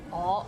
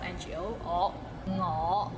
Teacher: we get lazy and we just say 我 like o sound instead of ngo